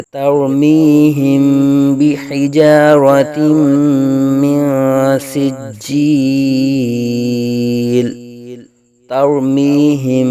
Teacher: را ساکن سے پہلے زبر را کو پر آ جائے گا